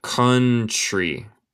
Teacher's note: El T suena más como CH.